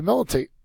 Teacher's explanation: First syllable is accented.